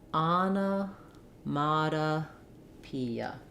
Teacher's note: we have the E the tense e vowel and the last letter A says uh · So you hear there's three sounds, three reduced vowels. Those are these schwas. Every other syllable. · The stress is on the P syllable.